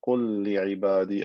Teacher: And then the last example, قُلْ لِعِبَادِي, again merging lam into lam to create one lam with shadda